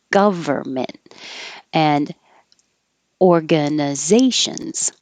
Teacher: If you have trouble with the word government, forget about that N, we don't say it.